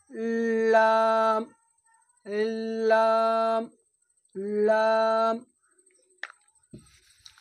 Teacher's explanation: লামের মাখরাজ হচ্ছে জিবের আগার কিনারা এবং সামনের উপরে দুই পাশের দাঁতের গোড়ার সাথে লাগিয়ে উচ্চারণ হয়